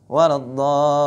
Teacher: Adapun waladdallin ini langsung dimasukkan ke huruf dha, idgham.